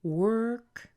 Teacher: we're going to have a rise on the last important word of the sentence, which happens to be working, and then a drop at the end.